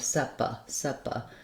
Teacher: It's like the word seven or red, same vowel sound. And then this letter A is unstressed syllable, and so we don't have any A-like vowel there, we just have an sound, sepa, sepa. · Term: schwa